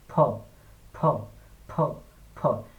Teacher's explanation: একটা বাতাস বের হবে মুখ থেকে, ধুম করে একটা বাতাস বের হবে